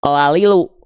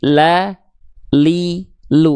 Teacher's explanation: Maka jangan sampai dibaca la lilu, tapi la li lu bunyinya beda antara la lilu ujung lidah doang dengan makhraj huruf lam. La li lu gitu.